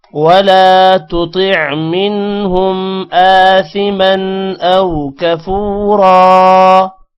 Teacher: طا اور تا میں فرق رکھنا ہے، پہلے تا ہے پھر طا ہے، طا کو موٹا کریں گے، عین کو پڑھنا ہے یہاں پر.